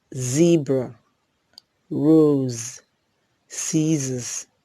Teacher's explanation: z is a voiced alveolar fricative